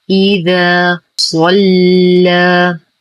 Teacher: نفخم الصاد، نرقق اللام ونخلصها من تفخيم الصاد، فلا نقول صلى، فهو برواية ورش فقط.